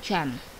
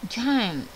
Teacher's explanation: Ketika kita ucapkan, kita pegang tenggorokan kita, ini ada sedikit getaran. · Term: voice consonant